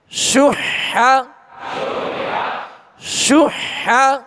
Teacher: ہا کو وسط حلق سے ادا کرنے، درمیان حلق سے ادا کرنے